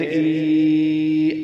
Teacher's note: کھڑی زیر ہے، اس کو ایک الف کی مقدار لمبا کریں گے۔